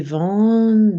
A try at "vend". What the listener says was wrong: Why vend? Are you saying vend or vend? Which one are you saying? Because your teeth are closing and I'm hearing a hybrid.